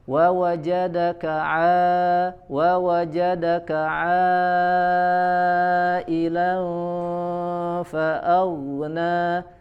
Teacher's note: Pada huruf ain, contoh misalkan kita sudah belajar bahwa huruf ain itu makhrajnya dari wasatul halq, ya. Huruf ain itu salah satu huruf yang keluar dari makhraj wasatul halq, yaitu dari tengah tenggorokan